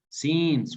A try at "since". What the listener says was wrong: without pronouncing the e